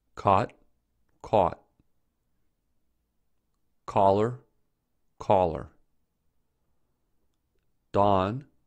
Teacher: due to the merger in standard American English these words are homophones · in standard American English, words that used to be pronounced with O are now pronounced with A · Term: cot-caught merger